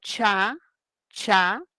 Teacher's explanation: ese sonido cha, cha, es una africada palatal. El proceso se puede llamar una palatalización.